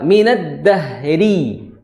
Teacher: salah satu ya kondisi huruf ro tipis adalah ketika dia kasroh